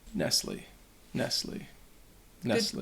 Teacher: Again, you don't pronounce the T.